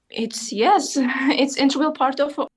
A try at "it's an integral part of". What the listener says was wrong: It's yes, it's integral part of our, and again, just the sentence stress is just slightly lacking. It's an integral part of our life. It's an integral part of our life.